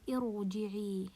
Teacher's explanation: ra sakina and preceded by hamzat al-wasl. So I will pronounce the ra as a heavy letter.